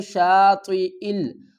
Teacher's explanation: یہ جو زیر ہے یہ حمزہ کے نیچے ہے، یا کے اوپر نہیں ہے۔ حمزہ کو ہم لام سے ملائیں گے